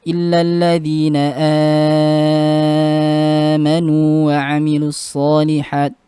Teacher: mad badal pada Warash ini dibaca 6 harakat.